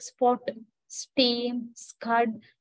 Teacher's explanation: per but the non-respirated stops voiceless of the same sounds but they do not involve any aspiration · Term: non-aspirated stops